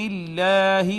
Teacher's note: اس میں جلالت کا ما قبل مکسور، لہٰذا اس کو مرقق پڑھیں گے، باریک پڑھیں گے